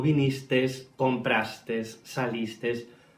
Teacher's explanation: es muy habitual en esta zona pronunciar una S al final de los verbos en segunda persona del pretérito perfecto simple